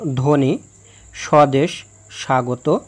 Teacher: আদ্য ব্যঞ্জন বর্ণে ব ফলা সংযুক্ত হলে সেই ব ফলার কোনো উচ্চারণ হয় না